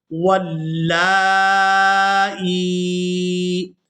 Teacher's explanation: اب یہاں پر جو آپ لوگ زیر دیکھ رہے ہیں، یہ زیر حمزہ کے نیچے ہے، اور یہ جو یا ہے یہ ساکن ہے، اور جزم جو ہے اس یا کے اوپر ہے۔ اب ہم نے حمزہ کو اس یا ساکن کے ساتھ ملاتے ہوئے کھینچ کر ادا کرنا ہے، کیونکہ یہ یائے مدہ ہے، یا ساکن ہو اور اس سے پہلے والے حرف کے نیچے زیر ہو تو وہ یا مدہ ہوتی ہے، اور اس کے ساتھ جو بھی حرف ملے اسے ہم نے کھینچ کر ادا کرنا ہوتا ہے۔